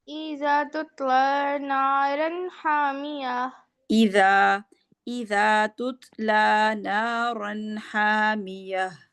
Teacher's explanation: लाम पे खड़ी ज़बर है ना, तो 2 हरकत के बराबर लंबा करेंगे